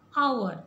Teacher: So here H is silent. So how do we pronounce hour? So it starts with the vowel sound ow. So ow, o. So here we have to place an before the word hour.